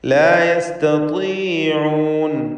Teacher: ത്വാഇന് കസ്റുണ്ട്, തഫ്ഖീം കുറഞ്ഞ തഫ്ഖീമാണ്, ഏറ്റവും താഴെ ലെവലിലുള്ള തഫ്ഖീം.